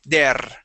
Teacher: when you are pronouncing your R, your tongue is hitting the top of your mouth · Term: rolling your R